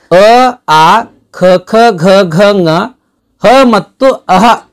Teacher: ನಮ್ದು ಗಂಟಲಲ್ಲಿ ಗಂಟಲಲ್ಲಿ ಹುಟ್ಟುತ್ತವೆ ಈ ಅಕ್ಷರಗಳು ಈ ಗಂಟಲಿಗೆ ನಾವು ಕಂಠ ಅಂತಾನೂ ಕೂಡ ಕರೀತೀವಿ ಹಾಗಾಗಿ ಈ ಅಕ್ಷರಗಳನ್ನ ಕಂಠ್ಯ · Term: ಕಂಠ್ಯ ವರ್ಣಗಳು